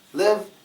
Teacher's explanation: when you say live live it's not really going up it goes down